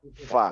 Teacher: Fa nah Fa Ini kombinasi antara gigi dengan bibir Ya Fa karena menyentuh ee gigi seri atas ya Fa sehingga menimbulkan kebocoran sedikit angin dan eh itulah yang disebut dengan Hames ya kebocoran angin itu